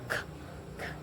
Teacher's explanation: Kemudian bunyi selanjutnya ada k. Nah, bunyi k ini termasuk ke dalam bunyi voiceless atau tidak bergetar, di mana pita suara tidak bergetar, k, serta berletup, sehingga masuk dalam nominasi letup, dan velar, di mana lidah bagian dalam menyentuh langit-langit lunak di dalam mulut.